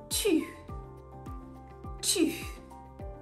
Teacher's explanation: In French, however, it's a much rounder and smaller sound with the lips closer together. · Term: ooh sound